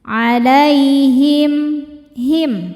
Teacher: izhar syafawi karena mim sukun menghadapi huruf selain mim dan ba mimnya dibaca jelas